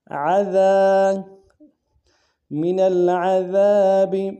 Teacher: عین کو گہرائی سے ادا کریں گے